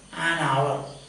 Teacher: Although the word begins with a consonant sound, ha, you don't pronounce it. So it is silent.